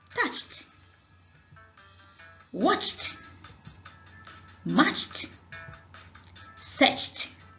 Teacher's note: When it adds ed like other voiceless consonants, the ed becomes /t/ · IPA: /tʌtʃt/